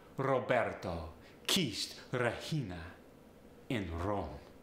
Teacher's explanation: listen to Italians when they're speaking there's often that tapped are not quite the full exaggerated rolled R like you get in accents like Scottish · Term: tapped R